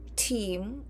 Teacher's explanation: in English, team, or whatever a word starts with a T, it is aspirated